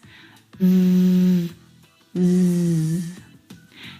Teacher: Both of those sounds are voiced consonant sounds. So the sound is made here in your vocal cords.